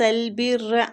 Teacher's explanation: را کو ادھر تشدید کے ساتھ پڑھیں گے، با کو را کے ساتھ شدت سے ملائیں گے